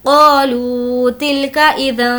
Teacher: قالوا کھینچ کر پڑھیں گے الف مدہ، لو کھینچیں گے واو مدہ